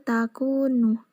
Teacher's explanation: Itu termasuk dari bacaan ikhfa karena nun mati bertemu dengan ta dan cara membacanya menyamarkan.